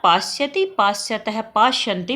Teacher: जब इसको बोलते हैं तो जीभ जो है वो दांतों को छूती है, इसलिए इसको बोलते हैं दंत्य सकार